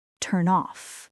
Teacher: Your mouth transfers the final consonant directly into the next vowel, like a slide. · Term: connected speech